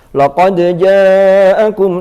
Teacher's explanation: dal ketemu jim itu bukan masuk idgham, sehingga harus jelas. Laqad ja'akum, tetap dalnya qalqalah sifatnya. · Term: izhar